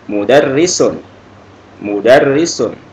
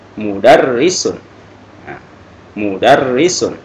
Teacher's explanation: ada tasdidnya, ada penekanan di huruf ro